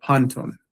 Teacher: the accent has shifted over to the first syllable here, and you have panton